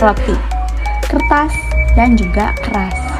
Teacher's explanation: Huruf R dalam bahasa Indonesia merupakan flanem konsonan getar rongga gigi yaitu alveolar tril. Bunyi ini dihasilkan dengan getaran ujung lidah yang menyentuh atau mendekati bagian alveolar busi atau dekat gigi depan sehingga terjadi getaran saat udara dari paru-paru dilepaskan melalui rongga mulut. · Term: alveolar trill